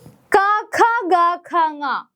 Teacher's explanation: ക എന്ന് പറയുമ്പോൾ ഏറ്റവും കൂടുതൽ ആ ഉച്ചാരണം വരുന്നത് നമ്മുടെ കണ്ഠത്തിൽ നിന്ന് കഴുത്തിൽ നിന്ന് ആയതുകൊണ്ടാണ് നമ്മൾ അതിനെ കണ്ണ് എന്ന് പറയുന്നത്. അപ്പൊ ക ഖ ഗ ഖങ്ങ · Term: കണ്ഡ്യാക്ഷരങ്ങൾ, കണ്ഠ്യാക്ഷരങ്ങൾ